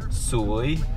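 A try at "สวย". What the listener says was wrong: Soy. You have to go up. Soy.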